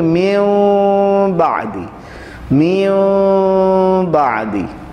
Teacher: جیسے اگر نون ساکن یا تنوین کے بعد حرف با آ جائے، با آ جائے تو ہم نون ساکن اور تنوین کی آواز کو بدل کر میم کی آواز سے پڑھیں گے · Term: اقلاب